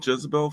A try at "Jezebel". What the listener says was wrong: Jezebel. It sounded like you said jizz.